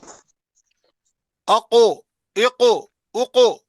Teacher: قاف جو ہے یہ موٹا ہے، پھول جاتا ہے ادا کرنے کے وقت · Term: موٹا حرف